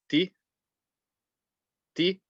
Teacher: Remember to keep the ta nice and light, the tip of the tongue between the gums and the teeth.